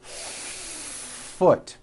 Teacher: Do you see how long I am holding that F? Now I know that's a little bit exaggerated, but you get the idea.